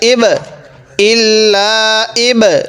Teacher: ইব, ইল্লা ইব, বাটা একটু ধাক্কা দিয়ে পড়বো, কারণ বাটা হলো কলকলা হরফ